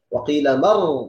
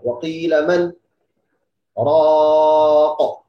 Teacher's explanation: Nah, kalau wasal biasanya waqila mar idgham nun sukun kemudian ra. Tapi ada saktah, tidak boleh idgham.